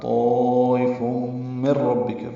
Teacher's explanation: طائف من ربک، میم کو را سے ملائیں گے. ادغام ہے لیکن ادغام کامل ہے، یعنی بلا غنہ ہے. نون کی آواز ختم ہو جائے گی، میم را سے مل جائے گا. · نون کی آواز ختم ہو جائے گی، میم را سے مل جائے گا. را پر پڑھیں گے اور با سے ملائیں گے.